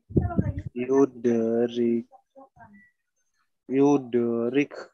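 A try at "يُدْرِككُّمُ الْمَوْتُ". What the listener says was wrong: Enggak yudrik, tapi langsung ke kaf kedua. Bukan yudrik umul. Tapi yudrik umul. Jangan dikeluarkan hamas.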